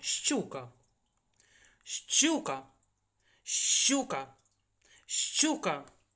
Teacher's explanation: при вимові Ми чуємо два звуки звукосполучення ш ч буква ща не проста аж два звуки познача два приголосних звука